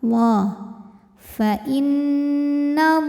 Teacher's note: lam pada lafaz Allah dibunyikan secara tafkhim sebab huruf sebelumnya berharokat fathah, maka dibunyikan dengan tebal.